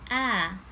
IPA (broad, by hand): æ